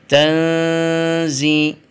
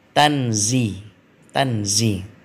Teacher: nun mati ketemu dengan huruf dza itu hukumnya ikhfa atau dibaca samar-samar dan didengungkan terazia gitu ya tidak boleh tanzi tanzih